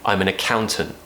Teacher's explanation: we're kind of stopping the T in our throat at the end of that word